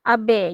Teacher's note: Kelantan guna epsilon dengan vokal separuh bulat tu